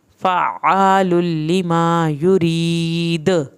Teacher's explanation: جب ساکن حالت میں آیا تو حروف قلقلہ ہو گیا اور ہم نے یہاں پہ خوب دال کو ہلا کے پڑھا ہے